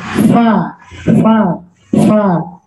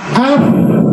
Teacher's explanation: Oh, dari segi nafas dia hamas, nafasnya mengalir.